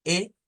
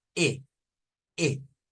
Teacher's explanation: tienen dos E. La E cerrada, que es la del español, E, y la E abierta, E, E.